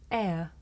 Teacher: this is a diphthong a double vowel sound the shape the mouth makes changes from the beginning of the sound to the end it's pronounced air did you notice how my mouth changed from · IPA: /eə/